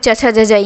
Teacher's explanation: च वर्ग का तालू से